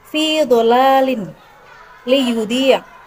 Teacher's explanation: Bunyi huruf dhad keluar dari dua sisi lidah atau salah satunya bertemu gigi geraham.